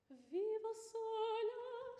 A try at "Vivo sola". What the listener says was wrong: Sola is too short. Sola, when we say it, the first vowel is long, isn't it?